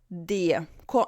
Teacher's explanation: Não é DER, é DA. O R, ele tem esse somzinho de A, se chama schwa.